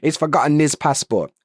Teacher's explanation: So the h disappears but an n shows up